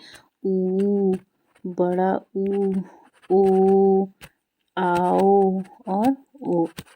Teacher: जिन स्वरों के उच्चारण में होठ क्या है वो वृत्त मुखी या गोलाकार होते हैं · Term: वृत मुखी